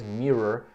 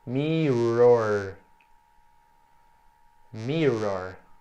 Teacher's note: mirror, que tem esse som virado do R